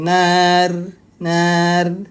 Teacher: itu tipis, nar. Bibirnya itu menyengir, bibirnya menyeringai. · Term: tarqiq